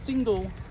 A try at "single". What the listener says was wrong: With the L on the end.